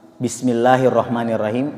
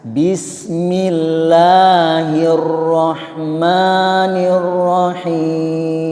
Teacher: kalau kasrah seperti Bismillahirrohmanirrohim maka itu dibaca tipis